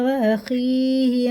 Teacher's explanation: یا ساکن سے پہلے زیر ہے، اسے بھی کھڑے زیر کی طرح کھینچ کے پڑھیں گے، یہ حرف لین ہے۔